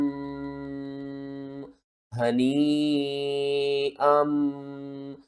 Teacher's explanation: ہا کو آپ نے حلق کے سب سے نیچے والے حصے سے ادا کرنا ہے ، اور یہ جو مد ہے نا یہ یا کے اوپر